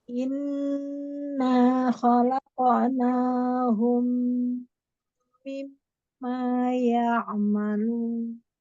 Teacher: jadi mimnya tidak terburu-buru ya, tempo durasi gunnahnya diperhatikan